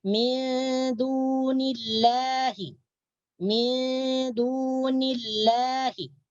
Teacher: kalau berbaris kasrah atau di bawah sebelum lafzul jalalah, maka lafzul jalalah dibaca tipis. Macam kita membaca lam biasa, la. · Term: tarqiq